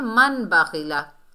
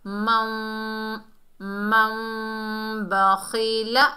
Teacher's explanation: नून की आवाज़ को मीम में बदलकर इख्फा शफवी से पढ़ना है। मन, मन बखीला ऐसे करके पढ़ना है। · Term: इकलाब